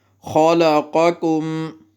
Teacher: پہلے والا قاف پر پڑھنا ہے، دوسرا پر نہیں پڑھنا